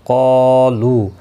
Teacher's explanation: بِأَنَّهُمْ نون مشدد پر گنہ ہوگا، میم کے بعد قوف آیا ہے، اظہار شفوی ہوگا۔ قالو قا الف مدہ ہے، لو واو مدہ ہے، دونوں کو ایک ایک الف کی مقدار کے برابر کھینچ کر پڑھیں گے۔ قاف مستعلیہ ہے، اس کے ساتھ میں الف بھی آیا ہے، دونوں پور پڑھے جائیں گے۔